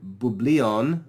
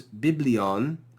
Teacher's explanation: that upsilon changes into iota, so that the pronunciation of the word is made easier by having the same vowel sound repeated. Bublion is harder to pronounce than biblion. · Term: assimilation